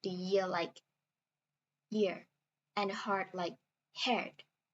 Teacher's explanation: The vowel in year and heart will be pronounced more like the vowel in air.